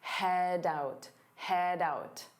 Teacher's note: Notice how head out combine together to sound like head out, doubt. So you hear that D sound on out